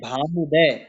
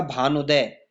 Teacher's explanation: तो भानु उ, भानु अंतिम पद हो गया छोटा ऊ और दूसरा पद का पहला वर्ण हो गया छोटा ऊ, दोनों छोटा ऊ धन छोटा ऊ मिला करके हो जाएगा बड़ा ऊ और शब्द का निर्माण होगा, संधि बन जाएगा भानुदय। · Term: दीर्घ संधि